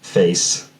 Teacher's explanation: more like face with a higher first element